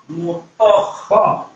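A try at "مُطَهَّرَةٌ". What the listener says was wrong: salah toh tutup mulutnya mutah ah itu betul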